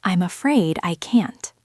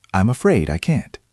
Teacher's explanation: The key is linking I'm and afraid.